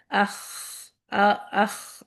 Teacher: یہاں پہ آواز اونچی ہے لیکن یہاں پہ ایکچولی آواز نہیں ہے، وسپرنگ ہے، ہوا ہے، صرف ہوا نکل رہی ہے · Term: ہمس